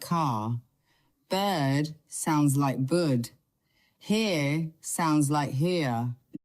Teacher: In British English, especially in what they call received pronunciation, the R at the end of words is often silent.